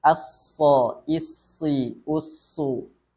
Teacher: tidak hanya nafas yang mengalir pada huruf Shad juga suara dan bunyinya mengalir · rokhawah, mengalirnya bunyi atau suara ketika kita membacakan huruf shad. As-so, isi, usu. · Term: rakhawah